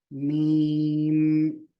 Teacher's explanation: आपके जो दोनों होठ है उसका बाहरी हिस्सा दोनों को मिलाना है ऊपर के होट नीचे का होट बाहरी हिस्से की तरफ से · बाहरी हिस्से की तरफ से मीम नाक में से आवाज आई नून और मीम की आवाज नाक में से आई